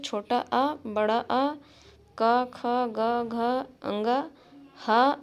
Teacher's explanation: छोटा आ, बड़ा आ, क, ख, ग, घ, अंगा, हा और विसर्ग कंठ से बोले जाते हैं